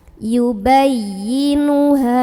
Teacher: Ha mad tabi'i karena ada alif sebelumnya fathah, dibaca panjang haknya 2 harokat.